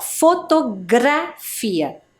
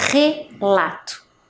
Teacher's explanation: a letra R no meio ali da palavra, ela teve um som, ó, fotografia, diferente da letra R no início, relato, né, que é um som mais forte